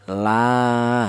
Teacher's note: Ya, cara bacanya dipanjangkan dua ketukan, la, seperti itu. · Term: mad thabi'i